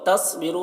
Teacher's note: صاد کو پر پڑھیں گے، اور را کو یہاں پر پر پڑھیں گے ، اور یہاں پر واو مدہ ہے، ایک الف کے برابر